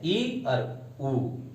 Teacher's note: इनके उच्चारण करने में जो है मुख कम खुलता है, ई और ऊ। ओके, तो इसीलिए इनको जो है समृद्ध स्वर कहते हैं।